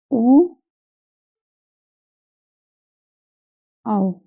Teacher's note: कंठ और होठ से इन दोनों के सहयोग जो होता है वो कहलाते हैं कंठोष्ठ